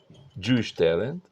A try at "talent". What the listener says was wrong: With an E, talent. With a E. After the L, E. Talent.